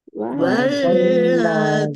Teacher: Dal kasroh ya sukun mat tobi'i, panjang 2 harokat